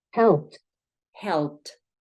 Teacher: vamos a pronunciar como una t un golpe de té fuerte